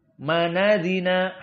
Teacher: Ingat, dibaca at-taklil. Maka hamzahnya adina dihilangkan. Dan harokat pada hamzah dipindah kepada nun yang sukun menjadi fathah.